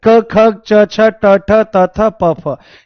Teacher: और मैंने कल ही आपको यह बात समझाई थी कि अघोष का मतलब है जिन वर्णों का उच्चारण करते समय हमारा जो स्वर तंत्र है, ये साउंड बॉक्स है, इसमें कोई भी वाइब्रेशन, कोई भी कंपन नहीं होता है, उसको अघोष कहा जाता है।